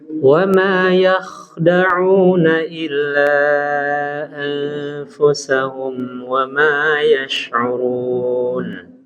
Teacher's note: Jadi yah benar-benar ditafkhimkan ya huruf kha